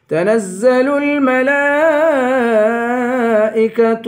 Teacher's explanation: زا کی سیٹی نکالیں گے، جمع کر پڑھیں گے.